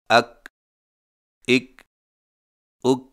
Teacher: کاف اور قاف کی آواز میں فرق: کاف باریک آواز ادائیگی کے وقت زبان کی جڑ کو کوے کے قریب تالو پر لگائیں